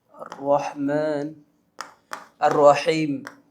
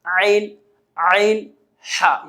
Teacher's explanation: آئیے اس کے بعد ہم اگلا حروف حلقی میں سے حمزہ ہا کو ہم نے سیکھا ہے، پھر عین اور حا، یہ 2 حروف جس کا مخرج یہ ہے کہ حلق کے درمیانی حصے سے، یہ درمیانی حصہ ہے، یہاں سے حمزہ، عین اور حا کو ادا کیا جاتا ہے۔ عین اور حا حلق کے درمیانی حصے سے ادا کیے جاتے ہیں۔